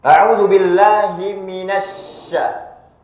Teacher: huruf syin di sana itu makhrajnya adalah tengah lidah yang menekat pada langit-langit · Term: huruf shin